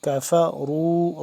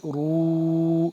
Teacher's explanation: را کو موٹا پر کر کے پڑھیں گے